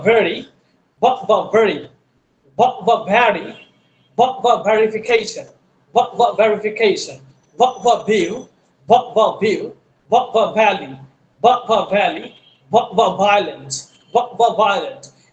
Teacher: পরেরটা দেখে ফ এবং ভ একই জায়গা থেকে উচ্চারিত হবে, উচ্চারিত হবে। ভ, উপরের দাঁত নিচের ঠোঁট, ভ।